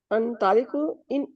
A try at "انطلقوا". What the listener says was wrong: انطلقو میں بھی کہہ رہا ہوں نا تا کے اوپر زبر ہے ان کو نہیں آپ ملا رہی نا.